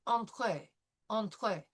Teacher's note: combine the nasal sound of e n with the soft t and the French r